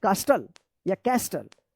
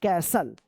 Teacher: यहां पे जो है ना टी साइलेंट रहेगा